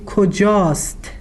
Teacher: because it ends in a long vowel, we just drop the aleph from است and use it